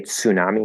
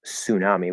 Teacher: we drop the T and just make it an s